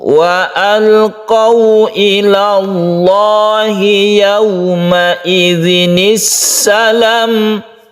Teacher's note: Wa alqau ini membentuk huruf u karena wawu. Tidak condong ke o tapi ke u.